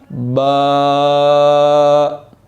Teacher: آپ اس کو معروف احسن طریقے سے ادا کریں گے، آرام کے ساتھ۔ الف با، با دونوں ہونٹوں کو ملانے سے ادا ہوتا ہے۔